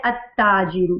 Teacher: और उससे पहले अलिफ लाम हमें नजर आ रहा है लेकिन लाम को हम नहीं पा रहे, अलिफ को हम ता के साथ जो है वो ज्वाइंट कर रहे हैं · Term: हरूफे शमसिया